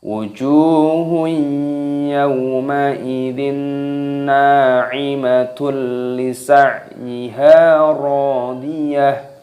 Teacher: dhammah tanwin bertemu dengan huruf lam, maka dibaca idgham bila gunnah. Bila gunnah itu tanpa berdengung.